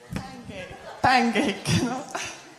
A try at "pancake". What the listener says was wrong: Okay, no, it sounded a little bit with G. I heard it G. Cake, like, and then nothing.